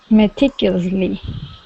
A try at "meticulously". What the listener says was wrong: Meticulously. Good, you're getting better. I think the problem at the very end is you're not saying slee. Meticulously. Meticulously.